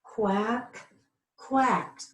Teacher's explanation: I'm hearing a T sound but there's no T there